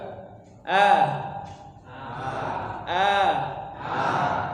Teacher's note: udara semuanya keluar dari mulut. Tidak ada udara yang keluar dari hidung. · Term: fathah